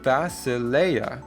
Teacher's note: And again, we have three vowels in a row. The E and the I together make an A sound and the A makes an ah sound